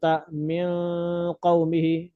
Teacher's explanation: تا ہم نے اخفاء کرنا، ناک میں زیادہ دیر لے جانا ہے. تا یعنی چھپ چھپ چھپ کے پڑھیں گے، ناک کے اندر چھپا کے اخفاء کریں گے زیادہ دیر.